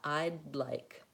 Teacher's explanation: I leave my tongue up for I'd, and I move right into like.